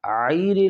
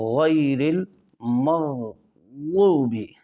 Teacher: اس کے بعد آتا ہے غیر المغضوب، اب اکثر ساتھی پڑھتے ہیں غیر المغضوب، تو غیر عیر نہیں کرنا، غیر الغین، زبان کی جڑ اوپر خا والی جگہ پہ لگے، ادنی حلق میں جو آپ نے اس کا مخرج پڑھا تھا، غیر المغضوب، تو دونوں غین کو عین نہ بنائے بلکہ غین کر کے پڑھے۔